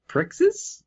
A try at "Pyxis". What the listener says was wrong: No, there's no R. PYXIS.